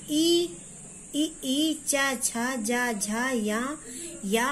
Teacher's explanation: ये तालु से बोले जाते हैं, उच्चारण स्थान इनका तालु होता है और वर्ग का नाम होता है तालव।